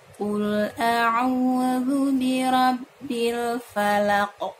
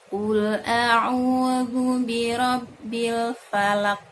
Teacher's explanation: huruf qaf ketika sukun ada pantulan ketika mengeluarkannya ketika sukun ada pantulan ketika mengeluarkannya karena huruf qaf merupakan qalqalahnya